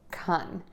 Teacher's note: when that syllable is unstressed we're going to use the short uh sound and say Kun. That's a great general rule of thumb.